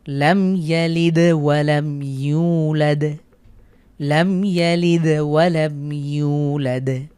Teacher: মিম সাকিনের পরে ইয়া হয়েছে, গুন্না ছাড়া স্পষ্ট করে পড়ব এবং শেষে দালের উপরে সুকুন থাকার কারণে কলকলা করে পড়ছি।